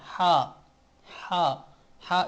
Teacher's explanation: कोई अब साउंड नहीं आना चाहिए बस खाली हवा से निकलती है